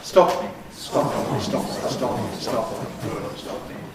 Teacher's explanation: One single bilabial gesture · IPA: [ˈstɒp mi]